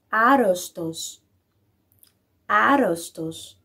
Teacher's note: Se pronuncia apenas uma, mesmo tendo dupla consoante.